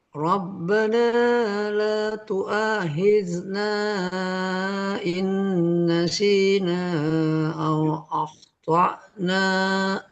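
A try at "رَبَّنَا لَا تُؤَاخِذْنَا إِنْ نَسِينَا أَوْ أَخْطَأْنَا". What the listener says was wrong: Hamzanya ke ain malahan ya kedengarannya. Au akh to na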